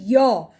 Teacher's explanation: आप उच्चारण करके देखेंगे य, ई और अ का उच्चारण होता है तो य बनता है